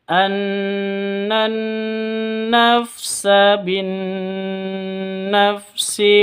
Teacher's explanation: Non tasydidnya berdiri sendiri. Harus dibaca dengung 2 ketukan karena gunnah musyaddadah.